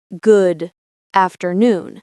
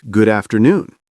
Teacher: The D sound from good connects to afternoon. So, it sounds more like good afternoon. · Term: connected speech